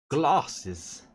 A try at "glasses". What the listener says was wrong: Doesn't say glasses. Glasses. There's an R in it somewhere with you.